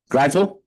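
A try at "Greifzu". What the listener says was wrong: Pronounce the F and the Z. Zoo.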